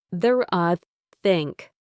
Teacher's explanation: For the unvoiced uh in think, you need to place the very tip of your tongue gently between your front teeth and blow air out. It is just air. No vibration from your vocal cords. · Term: unvoiced sound, unvoiced th